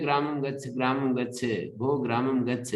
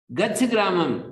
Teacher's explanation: जब हम किसी क्रियापद को बाद में उच्चारण करते हैं तो उसमें अनुदात्त होता है वो, लेकिन उसको आदि में बोलते हैं तो उदात्त हो जाता है।